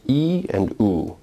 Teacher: Oo, as you can clearly see and feel, is a rounded vowel, whereas E is not a rounded vowel. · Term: roundedness